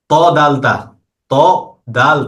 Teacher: জিহ্বার আগাটা উপরের দুই দাঁতের গোড়াতে লাগবে। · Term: 11 নম্বর মখরাজ